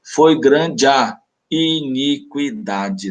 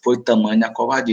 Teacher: Observa como esse A e esse outro A se fundem aqui num fenômeno que a gente conhece normalmente com a alcunha de crase, né? Só que essa crase aqui ela não é marcada, ela é só mesmo oral.